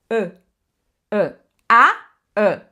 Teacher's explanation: não, puxa pro ã, um som a fechado